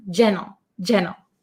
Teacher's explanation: When I say it quickly, as an American English speaker, I often cut the T sound.